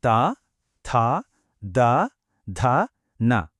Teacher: ఇక మన next point దంత్యం పేరులోనే ఉంది కదా దంతాలు అని నాలుక కొన మన పై పెళ్ల వెనక భాగాన్ని తాకినప్పుడు ఈ సౌండ్స్ ప్రొడ్యూస్ అవుతాయి.